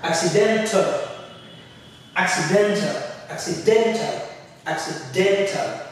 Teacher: The den is higher, you spend more time saying it. It's clear.